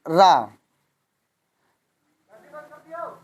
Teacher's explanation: तो हमारी जिह्वा कई बार लुढ़कती है, इसलिए इसको हम लुंठित व्यंजन कहते हैं